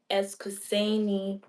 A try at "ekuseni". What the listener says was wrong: No, You said eskuseni, and remember we said ekuseni.